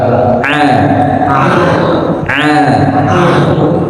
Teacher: huruf ain ini bukan dari hidung tapi dari tenggorokan.